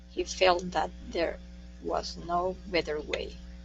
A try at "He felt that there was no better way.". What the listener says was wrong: Good, good. Nice job.